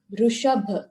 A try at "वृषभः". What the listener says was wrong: Not Rishabh, Rishabha. If it is Rishabh, the sound is different, therefore it will be different anta. Rishabh, when you say, it becomes Ukaranta. Rishabha.